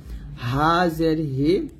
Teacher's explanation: হা এই হা টা চিকন করে বলতে হবে এটা হলো হা হলকে শুরু থেকে আমরা পাতলা করে বলবো